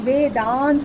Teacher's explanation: यानी इसमें भी अ है और इसमें भी आ है। अ और आ मिलकर बड़ा आ हो गया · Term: दीर्घ संधि